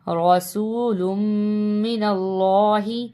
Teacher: اللہ کے نام کو موٹا پڑھیں گے · لام کو میم سے ملانا ہے، تشدید ہے